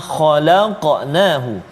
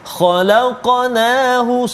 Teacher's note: qalqalah pada huruf qaf yang bertanda mati, berbaris mati ataupun sukun di tengah kalimah, maka qalqalah dia adalah qalqalah yang kecil saja, sughra. Sughra.